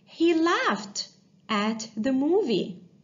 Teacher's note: The verb laughed, the ed ending sound, sounds like t sound because the verb laugh ends in the voiceless sound f sound.